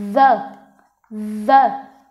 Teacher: Còn âm th hữu thanh có nghĩa là nó sẽ có âm phát ra, nó rung cổ họng. Đó, cái cách đọc âm này là khẩu hình miệng mình đặt giống như âm vô thanh nhưng mà mình sẽ gằn giọng hơn